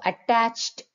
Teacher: డ తో ఎండ్ అయినా కూడా ప్రొనౌన్సియేషన్ లో మాత్రం ట సౌండ్ వస్తుంది